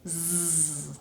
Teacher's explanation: I'm creating it here, so if I touch my throat, I can feel zzz. But I can also feel where my lips and tongue and teeth kind of feel this vibration in them when I say z.